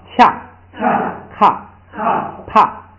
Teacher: 升调变成升降调，变成3声